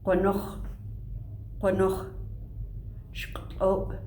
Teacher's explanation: Q, rounded uvular stop, rounded Q